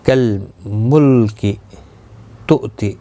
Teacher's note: حمزہ ساکن کو جھٹکے کے ساتھ پڑھا جائے گا